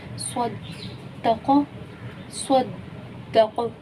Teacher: صدق صدق یہ دیکھیں قوف پہ کلکلا ہوا، قاف ساکن ہو گیا وقفی صورت میں، تو کلکلا والے حرف میں سے قوف آ رہا ہے.